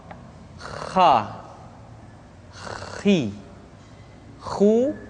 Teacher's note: dikeluarkan dari pangkal tenggorokan di pangkal tenggorokan diucapkan dengan mengalir nafas